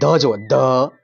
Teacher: ઉચ્ચારની દ્રષ્ટિએ તો આપણે તે ધ શબ્દ સાચો છે કારણ કે ધ ની અંદર આપણે દાતનો ઉપયોગ કરીએ છીએ